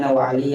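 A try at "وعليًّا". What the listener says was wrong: Aliyan, tanwin.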